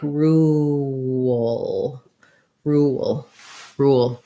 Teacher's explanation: we have a tense ooh sound and then same kind of glide will sneak in before my schwa and my l